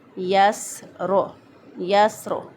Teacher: سین جو ہے وہ ساکن، سین کے اندر سیٹی کی آواز آنی چاہیے۔